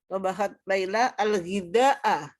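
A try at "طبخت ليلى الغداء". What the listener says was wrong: Al-ghida'a, betul.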